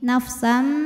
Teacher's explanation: Kemudian ada hukum iqlab karena ada tanwin fathah menghadapi huruf ba. Maka cara bacanya bunyi tanwin diganti bunyi mim. Nafsam disertai dengung.